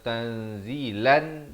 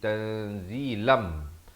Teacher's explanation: tanwin bertemu mim idgham bi gunnah. Asalnya tanzilan, tapi di sini jadi tanzilam. Tapi jangan lupa dengungkan 2 harakat.